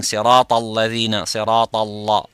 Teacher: Ta is full mouth, la is empty mouth.